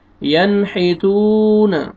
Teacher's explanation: یہاں پہ دیکھیں حروف حلقی میں سے حا آ رہا ہے، یہاں پہ آپ نے اظہار کرنا ہے، اور آگے واو مد ہے، واو جزم سے پہلے پیش ہے، تا کو آپ نے کھینچنا ہے